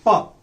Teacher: our vocal cords are held wide apart they do not come closer to each other when they do not come closer to each other no explosion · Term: voiceless